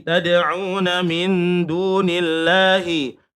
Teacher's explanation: Lafaz Allah yang dibaca tarkik. Mengapa? Lafaz Allah didahului kasroh.